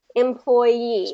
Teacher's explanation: So we're going to actually stress or emphasize that last part.